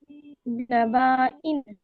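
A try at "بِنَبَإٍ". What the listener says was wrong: बिनबाइन, इसको नबा क्यों पढ़ना है, नबा नहीं पढ़ना है, बिनबाइन। ओके, क्योंकि ये जो अलिफ है ये बा के साथ मद नहीं है, ये अलिफ के नीचे हमजा आया हुआ है यहाँ पे। ओके, और दो जेर आए हुए हैं, तो बिनबाइन है ये।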